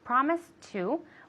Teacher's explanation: since it has a t sound they both have a t sound we can link it so it sounds like one word